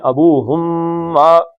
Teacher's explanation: ابوہم کا میم اور ما کانا، یہ دونوں آپس میں مل گئے ، ابوہم ما، اب یہ ابوہم اور ما علیحدہ علیحدہ نہیں